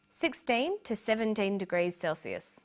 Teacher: notice that the two is unstressed